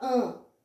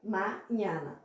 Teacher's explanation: lá na Espanha, em qualquer lugar que fala espanhol, você não vai nasalizar esse A. Você vai falar o A aberto.